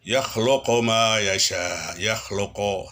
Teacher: harus mencucu, dan yang paling penting bukan hanya sekedar mencucu, tapi kedengaran bunyi u, bukan o. Karena banyak orang yang mencucu tapi bunyinya masih o. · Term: Dhammah